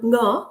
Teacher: there is a sound nga, which is velar nasal sound, which is very frequent in the word initial position.